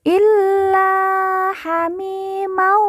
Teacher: Mi kita baca panjang dua harakat karena di depannya terdapat huruf ya sukun atau ya mati